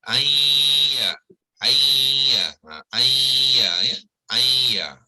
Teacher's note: Kita menyebut ya, tetapi non tu tinggal dengung saja. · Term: idgham